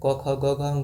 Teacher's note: कंठ से क वर्ग के 5 वर्ण बोले जाते हैं